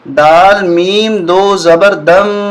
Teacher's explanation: کو با کے ساتھ، دوبارہ سنیں، دال میم دو زبر دم، یہاں غنہ ہوگا، میم مشدد ہے